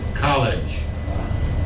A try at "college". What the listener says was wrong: J. I don't hear a J.